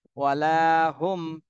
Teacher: সাকিনের পরে বা আর মিম এই দুইটা হরফের কোনোটাই আসেনি এজন্য এই মিম সাকিনে স্পষ্ট করতে হবে কোনো গুণনা করা যাবে না স্পষ্ট করে পড়তে হবে